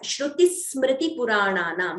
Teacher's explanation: Extra S, that is the doubling or Dvitvam.